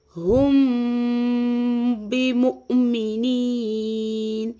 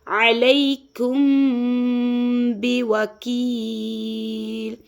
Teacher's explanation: پوری میم ساکن کی آواز کو ہم چھپائیں گے اور یہاں پہ گننا بھی کریں گے، یعنی کہ یہاں پہ اخفاء شفوی ہو رہا ہے۔